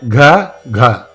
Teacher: the reverberation of these is from the back of the throat and it is not as hard it is softer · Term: Soft consonants